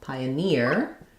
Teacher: it's pioneer, last syllable stress. So secondary stress on the pi syllable. Pioneer, it has the tense E sound, so pioneer, we stress here on near.